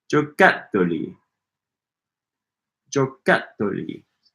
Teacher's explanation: Stress on that cat.